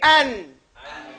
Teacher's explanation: it's bleeding out from your nose and everything is in the front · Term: Noon